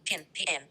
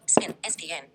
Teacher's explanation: English P, pin, pn, aspirated, spin, spn, unaspirated.